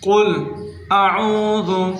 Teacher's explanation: قل، قاف کو پر کر کے پڑھنا ہے، یعنی موٹا کر کے پڑھنا ہے۔ قل اعوذ، عین کو حلق سے نکالنا ہے اور حمزہ کی آواز کو الگ کر کے پڑھنا ہے